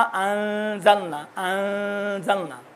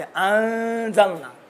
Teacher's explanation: नून कामिलन मख्फी रहता है, सदा आवाज़ जो है भीनी से निकलती है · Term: इख्फा